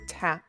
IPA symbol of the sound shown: t